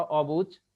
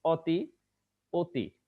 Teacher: তাহলে আমরা এখানে দেখলাম যে অ এর দুই ধরনের উচ্চারণ হয়, প্রথমত অ অই থাকবে, দ্বিতীয়ত অ ওকারের মতো উচ্চারিত হবে। আমি তিনটা উদাহরণ দিলাম, প্রথমটা অবুঝ, এখানের অ অ আছে।